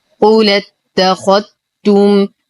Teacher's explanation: لدينا نقل للإمام ورش يقوم بحذف الهمزة ونقل حركتها للساكن الصحيح قبلها، وإدغام الذال بالتاء.